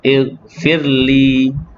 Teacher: Ighfir, kerana ra yang dalam kalimah firli ni ra yang tarkik nipis. Ighfirli, fir dia ada getaran sedikit saja, tidak kuat sangat.